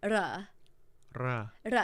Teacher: so there's a single rolling R